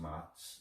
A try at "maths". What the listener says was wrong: You didn't pronounce your TH.